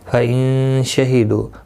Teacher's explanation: نون ساکن کے بعد حروف اخفا کا شینہ اخفا حقیقی ہوگا